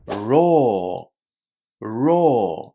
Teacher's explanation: You only say one long o at the end.